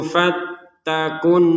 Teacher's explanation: Alif lamnya sudah tidak dibaca langsung ke Nun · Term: alif lam asyamsiyah